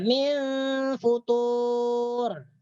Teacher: Min futur ra-nya dibaca tebal sebab sebelum ra yang dimatikan atau yang diwaqafkan ada waw maddah.